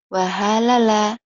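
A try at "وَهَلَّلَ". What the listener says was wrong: wahalala ada tasydidnya. Datar aja. Datar. Kalau wiwin ada tasydidnya. Kecil sedikit tapi pengaruh ya. Ada tasydidnya, ada pendobel ya. Kayak ila dan illa.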